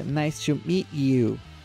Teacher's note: vocês perceberam que ela junta a palavra meet you